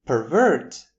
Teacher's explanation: as a verb with the stress on the second syllable